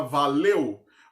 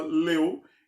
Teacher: na segunda sílaba, leu, eu tenho primeiro uma vogal, a vogal E, e depois uma semivogal. Logo, o som mais forte vem primeiro, o som de vogal, e depois vem o de semivogal. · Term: ditongo decrescente